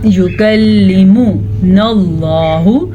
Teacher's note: میم کو لمبا نہیں کرنا، میم کے اوپر زبر ہے